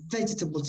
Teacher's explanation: be careful where you stress the word, just the first syllable, vegetables. If you put that stress correctly, the rest will be natural, okay?